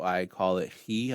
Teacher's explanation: it's more of a guttural so it's CH like in the word lock or Johann Sebastian Bach it's a slight guttural